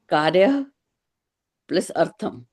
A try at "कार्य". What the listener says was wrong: कार्य नहीं होगा, कार्य, ओनली कार्य. कार्य नहीं, कार्य. हाँ, विसर्ग नहीं रहेगा.